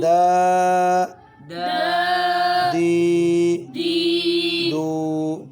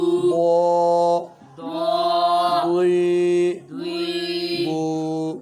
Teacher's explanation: دال باریک ہے اور دود موٹا ہے